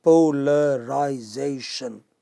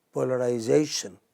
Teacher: This word has 6 syllables, polarization. Okay, but you don't stress po or la or I, you stress zation in English, polarization.